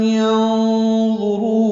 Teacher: افلم حمزہ کو جلدی سے پڑھنا ہے، فا کو بھی جلدی پڑھنا ہے، لام کو میم سے ملانا ہے، میم ساکن پہ اظہار شفوی ہے. ینظروا میں نون ساکن کے بعد ضا آنے کی وجہ سے نون کی آواز کو چھپائیں گے، یعنی اخفا کریں گے.